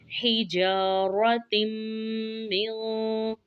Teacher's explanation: जा को खींच कर पढ़ेंगे क्योंकि अलिफ मद है, और रा को मोटा पढ़ेंगे। फिर आगे देखें।